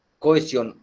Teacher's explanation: la unión de dos vocales abiertas diferentes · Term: hiato